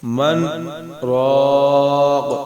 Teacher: تو اس میں پڑھتے وقت رکتے ہیں لیکن سانس نہیں توڑتے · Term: سکتہ